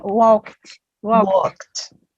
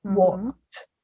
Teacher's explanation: So this verb ends in ed, but the pronunciation is with a T at the end.